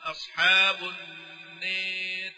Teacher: الراء المفخمة لا تناسب الإمالة، فهي ترقق للإمالة التي قبلها